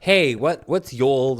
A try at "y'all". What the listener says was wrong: You have to like really like enunciate the ah. You have to say y'all, not you.